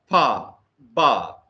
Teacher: The air passage is closed by two lips. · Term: Bilabial plosives